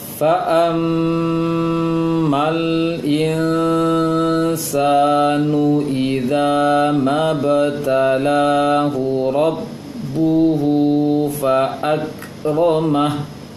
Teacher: mim bertasydid ditahan lama